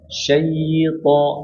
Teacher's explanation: Syaito disempurnakan dulu 2 harokatnya, kemudian ucapin huruf to langsung.